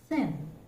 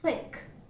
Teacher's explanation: the tip of the tongue is making a light contact with the upper teeth, and the air is escaping through the narrow space, causing audible friction